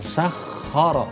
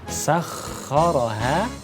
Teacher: jadi ada penekanan yang kuat ya, sehingga bunyi tasdidnya itu menjadi sempurna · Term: tasydid